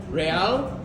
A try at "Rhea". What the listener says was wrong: No L, just Rhea.